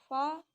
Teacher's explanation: Gigi atas di bawah bibir